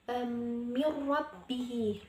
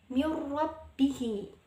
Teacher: dimana huruf ro ini dibaca tasjid atau memasukkan huruf sebelumnya pada huruf bawahnya namun tidak berdengung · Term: idgham bilagunnah, idgham bila gunnah